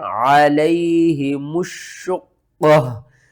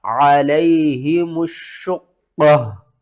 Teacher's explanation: وقف کی صورت میں تا کو ختم کریں گے، پیش کو کریں گے، تو آ کا مطلب ہے وقف مطلق، اور قاف کے اوپر ہم نے قلقلہ کرنا ہے، قاف کو موٹا پڑھنا ہے، قاف کو 2 بار پڑھنا ہے، شین کو 2 بار پڑھنا ہے، سختی کے ساتھ پڑھنا ہے، اس سے پہلے الف اور لام اس کو بھی آپ نے چھوڑ دینا ہے۔